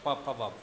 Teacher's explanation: अब प, फ, ब, ब में देखिए, ओठ का दूसरे ओठ से स्पर्श होता है